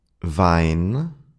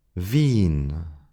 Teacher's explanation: word pairs where one includes the diff thong i and the other the long e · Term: diphthong I